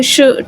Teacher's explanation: पैलेटल्स में हमारी place of articulation कहाँ पे होती है, आपकी जो टंग है वो राइज करती है टू द पैलेटल